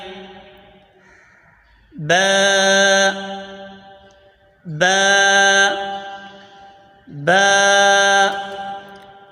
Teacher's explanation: دونوں ہونٹوں کے تر حصے سے ادا ہوتا ہے